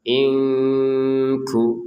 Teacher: Nun sukun bertemu kaf baca dengan samar.